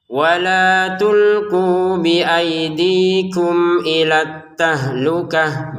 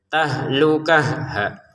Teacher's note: Berhenti di sini, maka huruf ta-nya kita terbacanya ha ya